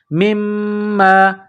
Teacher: میم کو میم کے ساتھ پلس کرنا ہے، میم میں غنہ کرنا ہے، آواز ناک میں چھپانی ہے